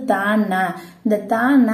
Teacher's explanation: த ந அப்படிங்கிறப்ப நம்மளோட நாக்கோட நுனி போய் எங்க போய் டச் பண்ணும் மேல்வாய் பல்லோட அடிய வந்து டச் பண்ணும்